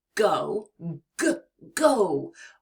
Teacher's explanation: To make the G sound, the back of your tongue is going to touch the soft part of the roof of your mouth, near the back of your mouth · When you release your air, it's almost like a gentle push, and your vocal cords vibrate to make that deep sound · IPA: /g/